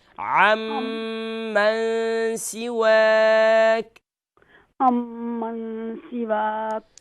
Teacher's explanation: ہاں یہاں عمن کیونکہ میم جو ہے ڈبل لیٹر ڈبل ساؤنڈ ہے، حرف مشدد ہے، تو یہاں ہم اسے ڈبل کریں گے